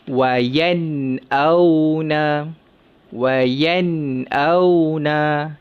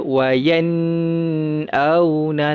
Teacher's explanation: kita matikan nun tu dengan jelas, tidak ada dengung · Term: izhar halki